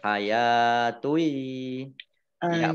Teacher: Dhammah tanwin bertemu dengan huruf ya, bacaan idgham bi gunnah